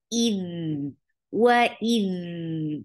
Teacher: Dal will get sifa of rakhawa. The sound should flow.